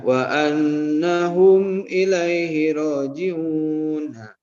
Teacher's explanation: hum mim sukun ketemu hamzah itu harus diidharkan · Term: idhar syafawi